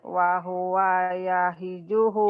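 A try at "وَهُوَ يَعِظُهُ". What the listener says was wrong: Ya'i. Wahuwa ya'i. Ainnya suka ke ha.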